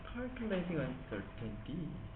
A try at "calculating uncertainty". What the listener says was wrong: I don't think you should stress the middle. That doesn't sound right. I think we should stress here. Yeah, because you have certainty and uncertainty.